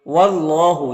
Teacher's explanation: اللہ کے لام سے پہلے واو کے اوپر زبر ہے تو اللہ کے لام کو پر پڑھیں گے۔ کھڑا زبر ہے تو اسے ایک الف کے برابر کھینچیں گے کیونکہ یہ الف مدہ کی طرح ہوتا ہے، اور یہ الف اور یہ اللہ کا پہلا لام میں کوئی حرکت نہیں ہے تو اس کو نہیں پڑھنا ہے۔